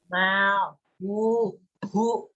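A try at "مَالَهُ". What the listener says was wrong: Lu-nya itu kok nggak jelas sih kamu itu? Lihat hurufnya itu.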